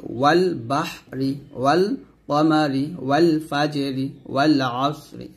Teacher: এখানে আলিফ পড়া যাবে না, তবে লাম পড়তে হবে, ওয়াওকে লামকে ধরবে, ওয়াল বাহরি, ওয়াল কমারি, ওয়াল ফাজরি, ওয়াল আসরি, এরকম ভাবে।